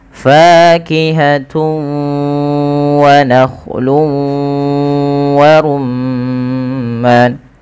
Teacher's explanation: dengan huruf wau maka ini kita namakan dengan bacaan Idgham bighhunah cara membacanya yaitu memasukkan tanwinnya kepada huruf wau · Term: idgham bi gunnah